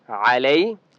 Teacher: आइन की आवाज़ बरीक हलक से निकालेंगे। लई या लीन है, लाम को लंबा नहीं करते, ठीक है।